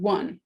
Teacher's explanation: in one it's representing a /w/ and /ʌ/ at the same time